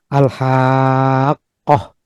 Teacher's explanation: di mana setelah huruf mad itu adalah huruf yang bertasydid seperti alhaqah. Jadi alha itu mad kemudian ada huruf qaf yang bertasydid. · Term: kalimi mutsaqqal